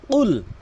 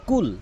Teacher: কফটি জিব্বার গোড়া উপরে তালু থেকে উচ্চারণ করতে হয়।